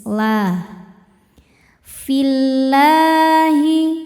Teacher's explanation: Jadi fi-nya pendek. Fillahi lam jalalah dibaca tarqik karena sebelumnya kasrah maka lam ini dibaca tipis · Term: tarqiq